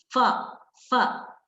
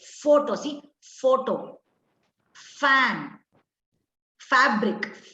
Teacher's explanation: the upper teeth touch the lower lip Okay see f f the upper teeth touches the lower lip and Air gushes continuously